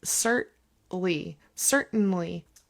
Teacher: I kind of skip the middle syllable with the T and just elongate the N